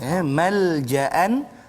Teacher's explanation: Jadi kita baca dengan izhar halqi. Malja'an, jangan dengung pula